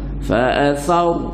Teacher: ra tu tebal. Fa'athar, jadi kembung mulut kita